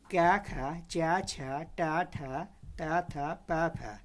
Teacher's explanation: प्रत्येक वर्ग का पहला तथा दूसरा वर्ण अघोष वर्ण है।